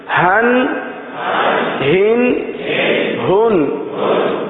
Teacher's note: ہا کی آواز ہا ہی رہے کیونکہ عموماً ہا بدل جاتا ہے حمزہ سے حرف ہا کو حرف حمزہ سے بدل دیا جاتا ہے جیسے